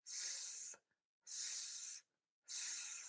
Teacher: Your mouth is going to be open and the air must continuously move out of your mouth for this sound. f Think about touching or gently biting the inside or the outside of the bottom lip with your teeth. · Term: the f sound